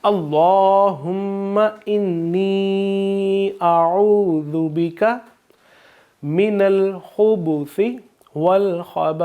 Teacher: सा में सीटी की आवाज़ नहीं आएगी